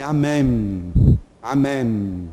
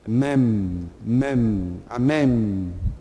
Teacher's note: Não, o final é M. Em hebraico fala-se amém. Amém. O M tem que aparecer. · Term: mem final